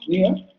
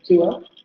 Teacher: estos diptongos centrales, si se dan cuenta, surgen justamente por la pérdida de la consonante vibrante, es decir, en acentos no róticos